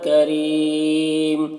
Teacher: را کے نیچے زیر ہے تو را کو باریک پڑھیں گے، اور یہاں پر یا مدہ ہے.